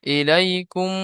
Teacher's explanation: গুন্নাটা টান নয়, গুন্নাটা আওয়াজটা নাকের মধ্যে ধরে রাখতে হবে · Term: নাকের টান